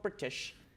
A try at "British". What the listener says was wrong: when you say British, you can't pronounce the T.